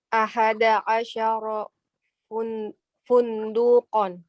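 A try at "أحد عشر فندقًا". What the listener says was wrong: Nggak pakai waw, fundukan.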